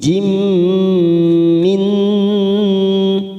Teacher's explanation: kasrah tanwin pada huruf jim bertemu mim, namanya idgham bigunnah. Kita tekan 3 ketuk